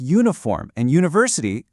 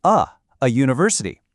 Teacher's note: Words like uniform and university clearly start with a U, but when you say them out loud, they sound like they start with a Y.